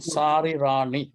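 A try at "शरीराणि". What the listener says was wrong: So Sha is short, brother. long. So if you look at the transliteration, the A next to the Sha doesn't have any. elongation.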